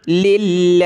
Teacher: لفظ اللہ سے پہلے یہ لام پر زیر ہے تو پتلا کریں گے